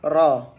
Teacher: Sifat takrir ialah terjadinya getaran ujung lidah saat mengucapkannya.